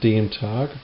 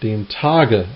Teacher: For example, der Tag would become not just dem Tag, but dem Tage, and that's when you would finally actually hear that there's a G at the end, a voiced G, which is unvoiced when there's no letter after the G.